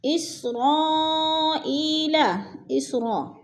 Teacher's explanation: ادھر مد متصل ہے، 4 الفی مد ہے، 4 حرکات کے برابر لمبا کرنا ہے۔ ای میں یا ساکن سے پہلے حمزہ کے نیچے زیر ہے تو ادھر یا مدہ ہو رہا ہے۔